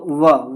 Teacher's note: दंत प्लस ओष्ठ दोनों का उच्चारण स्थान होता है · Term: दंतोष्ठ